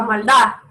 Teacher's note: la D es una consonante interesante en español porque se pronuncia a veces tan suave, tiene tan poca fuerza que a veces desaparece